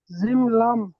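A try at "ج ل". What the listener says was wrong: জি, টান দিয়ে পড়েন একটু, যেটা যত আলিফ পরিমাণ টান আছে একটু টান দিয়ে পড়েন।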